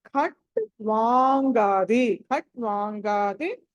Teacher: వా తర్వాత అనుస్వారం ఉంది తర్వాత గ ఉంది కాబట్టి దీన్ని ఆ పంచమా అక్షరం పలకాలి